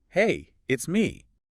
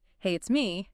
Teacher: if you went up at the end, hey, it's me, that would sound like a question, like you're unsure if the person knows who me is.